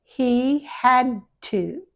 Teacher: the D and the T have the tongue in exactly the same place. One vibrates and one doesn't. So, just leave the tongue there.